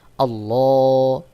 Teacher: আল্লাহুম্মা আল্লাহ এখানে দেখুন আল্লাহ বলতে হবে এটাকে পর বলা হয় আল্লাহ শব্দের লামকে মোটা করে পড়তে হয় · উপরে খাড়া জবর রয়েছে এখানে এক আলিফ টান দিয়ে পড়তে হবে